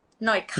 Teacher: for female speakers, right, ka is a falling tone